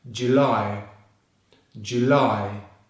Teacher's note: The stress is on the 2nd syllable.